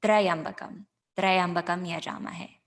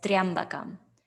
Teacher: However, what's given is Triambakam. So rather than saying two syllables of tra, ya, we say one syllable of triya. It's like saying ya, just adding that tra right before it.